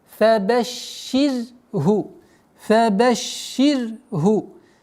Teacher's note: Ра здесь мягкая. Шин удваиваем.